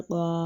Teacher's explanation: الف ساکن ہے اور اس سے پہلے زبر ہے تو یہ بھی الف مدہ ہے، تو اس کو بھی ایک الف کے برابر لمبا کر کے پڑھیں گے